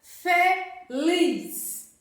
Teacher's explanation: Lis é a sílaba mais forte, né? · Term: palavra oxítona